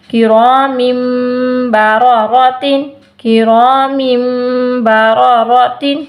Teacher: تو حاصل کلام کیا ہوا، اگر نون ساکن اور تنوین کے بعد با آ جائے، وہ نون ساکن کو، وہ چاہے نون ساکن یہ والا ہو چاہے تنوین والا نون ساکن ہو، یہ دیکھیں ہم نے اس نون ساکن کو ختم کر کے وہاں پہ ہم نے میم کو لگا دینا ہے